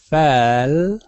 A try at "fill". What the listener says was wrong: Fill. Fill. Fill. Not fell, but fill.